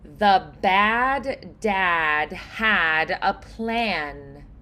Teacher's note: these are brighter vowels. they are a little bit more open and they're very forward in the mouth. The tongue is pressing more forward.